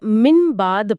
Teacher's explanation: من بعد کو من بد نہیں پڑھیں گے، نہیں، اسے من بعد پڑھا جائے گا۔ ہونٹوں کو نرمی سے ملا کر اور ساتھ میں غنہ بھی ہوگا